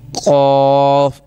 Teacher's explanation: اس کو موٹا پڑھنا ہے اور تالو کے نرم حصے سے یہ آواز نکلنی چاہیے